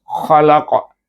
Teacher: Kemudian kalimah yang terakhir kita sukunkan saja, khalaqa, kita sukunkan qaf itu dengan bacaan qalqalah kubra